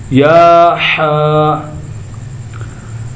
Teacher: ہا جو ہے حلق کے درمیان والے حصے سے ادا ہوگی